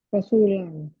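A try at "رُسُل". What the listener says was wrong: rusulun. Kan ada di wa kutubihi wa rusulihi. Pakai dhamma, pakai dhamma. Kalau pakai fathah roknya Rasul pasti sinnya panjang. Rasul itu tunggal. Tapi kalau jamak malah pendek semua dhamma. Rusulun.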